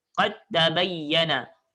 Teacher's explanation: Sebab huruf dal dengan ta dia hampir sama. Hampir sama dari segi makhraj. Dal di hujung lidah, ta pun di hujung lidah. Tetapi sifat dia berbeza. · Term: idgham mutajanisain